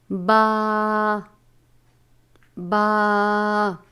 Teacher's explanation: دونوں ہونٹوں کے تر حصے سے ادا ہوتا ہے